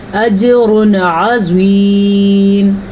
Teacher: را کے اوپر پیش ہے تو را پر پڑی جائے گی